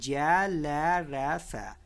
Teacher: वातस्य वर्ण दांत, वातस्य का अर्थ होता है दांत का निचला भाग। दांत के निचले भाग की सहायता से जिन वर्णों को बोला जाता है उन्हें वातस्य वर्ण कहते हैं।